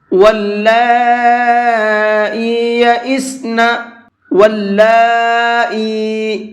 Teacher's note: پہلا لفظ ہے واللائی یئسن، واللائی، یہاں پر یہ الف بنا ہوا ہے واو کے بعد میں، تو یہ الف نہیں پڑھا جائے گا، اس واو کو ڈائریکٹ اس لام کے اندر ملائیں گے، اور لام کے اوپر کھڑا زبر بھی ہے اور مد بھی ہے، اور یہ مد بڑا مد ہے، اس کو 4 سے 5 الف کی برابر کھینچ کر کے پڑھتے ہیں، یعنی کہ 4 سے 5 سیکنڈ تک اس کو کھینچنا ہوتا ہے۔